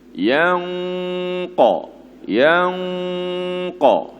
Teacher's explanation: Nun bertemu dengan qaf kena dengung. Dan dengung tu kena tebal.